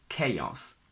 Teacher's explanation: I personally put a little y between A and O